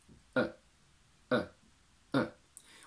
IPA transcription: ə